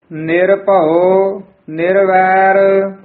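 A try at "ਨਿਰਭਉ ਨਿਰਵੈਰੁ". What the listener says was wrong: ये भी निरभौ वक्रे वक्रे नहीं बोलने पद, ये पद इकट्ठा ही बोलना है। निरभौ निरवैर, कई निरभौ कह जाते हैं, भब्बे हूड़ा ला देंगे हैं, पर भब्बा ऊड़ा बंद मूह वाला है, थले औंकड़ लगी है, इहदा उच्चारण है निरभौ निरवैर।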